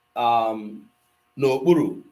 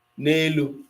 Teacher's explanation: If that noun begins with a vowel, it is going to drop the a that is in na and take apostrophe.